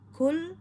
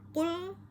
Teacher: Kaf dengan qof itu hanya berdekatan sama-sama ada pada pangkal lidah